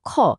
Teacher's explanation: খ বলার সময় একটা বেশ জোরে সোরে বাতাসের ধাক্কা লাগলো না হাতে? ওটাই হলো মহাপ্রাণ। ক, গ হলো অল্পপ্রাণ।